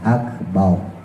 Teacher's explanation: pas kita sholat dilatih akbar, kafnya hamas, roknya ditebelin ya